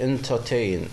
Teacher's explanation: the stress in the last syllable